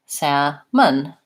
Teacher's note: the UH sound which actually is the upside-down e schwa in this word salmon